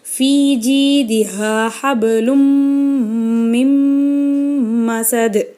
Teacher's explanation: தன்வீனுக்கு அப்புறம் மீம் வந்திருக்கு, இங்கே நம்ம குன்னா செஞ்சு ஓதணும்.